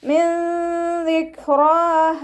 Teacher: നൂൻ സാക്കിനയ്ക്ക് ശേഷം ഇഖ്ഫാഇൻ്റെ അക്ഷരമായിട്ടുള്ള ദാല് വന്നു. നൂൻ സാക്കിനയെ മറച്ചു വെച്ച് മണിച്ചോതി കൊടുക്കുക.